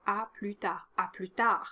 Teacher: Don't pronounce any of the final consonants